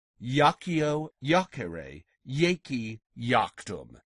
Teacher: The Latin I, did you notice, is pronounced like an English Y in this word. That's because it's next to another vowel.